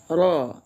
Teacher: Itu bahasa Indonesia kalau baca pakai getarannya. Tapi kalau arab ro itu cara membacanya ditebalkan seolah-olah kita memadukan antara huruf ee suara O dengan a ya ro. Nah, begitu cara membacanya.